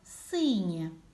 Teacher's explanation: перший звук в слові син звук с твердий приголосний